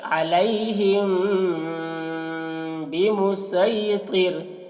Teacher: یہاں پر میم میں غنہ کریں گے، غنہ اخفا کریں گے